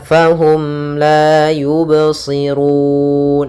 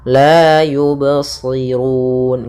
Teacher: mengalir suara bnya tidak putus dan tidak pula sakta dan tidak pula ada tambahan Hamzah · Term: Qalqalah